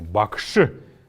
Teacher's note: обязательно нужно отметить что после буквы ш есть неясный гласный